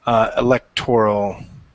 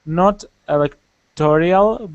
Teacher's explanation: The accent is on the second, not the third syllable, and there is no I in it.